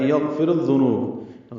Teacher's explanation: را کو ذال سے ملا دیں گے، ادغام شمسی ہوگا، ذال نرمی سے پڑھا جائے گا۔